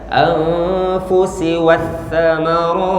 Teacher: Anfusi jangan dibaca shi, jangan dibaca ti, tapi sin biasa.